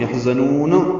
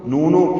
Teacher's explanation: ولا ہم یحزنون، ہا ساکن پہ ہم سے، ذات سفید کی آواز سے نکالیں گے، نون کو لمبا کریں گے وقفاً، یحزنون، یہ مد عارض میں سکون بنائیے اور نون ساکن پہ اظہار کریں گے، قلقلہ نہ ہو